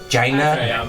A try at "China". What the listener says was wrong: It sounds like you're saying giant.